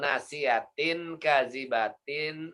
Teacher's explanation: nasiyatin ka itu ditahan, 2 ketuk ya, atau 2 harokat atau 1 alif.